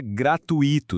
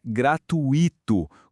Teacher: Muita gente fala gratuito separando as sílabas, né? Mas o certo é que o i fica junto formando um ditongo